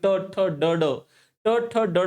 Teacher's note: सर्वात जास्त रोल हा तिथं मुर्ध्याचा आहे कारण जीभ वळून ती जीभ मुर्ध्याला लागते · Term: मूर्धन्य